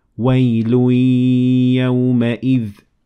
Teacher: So here it is the tanween of Wail, and it was merged with the ya in yawma idh. So it would be wailu yawma idh.